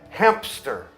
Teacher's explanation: Depois de um M, muitas vezes colocam o som de P.